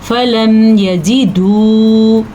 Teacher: واو ساکن ہے تو اس کو لمبا کر کے پڑھیں گے. فَلَمْ يَجِدُوا اتنا لمبا اس کو کرنا ہے.